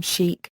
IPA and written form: ˈʃiːk (Chic)